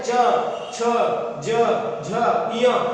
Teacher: उसके बाद में जो चा वर्ग है च छ ज झ य, जब हम इन वर्णों को बोलते हैं उच्चारित करते हैं तो ये कहां से, जीभ कहां लगती है, छत को छूती है, किसकी, मुंह की छत अर्थात तालु से उच्चारित होते हैं, इसीलिए इनको कहा जाता है तालव्य व्यंजन कहा जाता है।